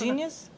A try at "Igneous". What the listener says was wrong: No, no. You're just flipping the N and G. Igneous Anyway, what a lovely name.